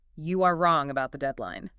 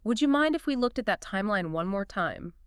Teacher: The pitch goes up slightly on mind, signaling deference, and falls gently at the end. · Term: soft rising and falling tones